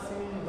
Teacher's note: जेव्हा अनुस्वार पहिला लागलेला असतो तेव्हा ह सोबत घ चा उच्चारण पण येतो